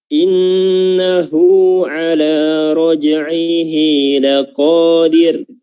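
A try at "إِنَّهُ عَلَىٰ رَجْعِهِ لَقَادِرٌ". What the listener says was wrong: Ya, yang kedua bagus, laqadir ya, ro-nya tipis ya.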